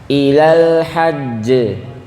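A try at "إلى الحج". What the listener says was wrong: Agak tahan dikit Bapak. Ilal hajj.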